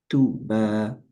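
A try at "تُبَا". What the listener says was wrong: না, টুতে আরেকটু টান হতে হবে। তুবা, তুবা।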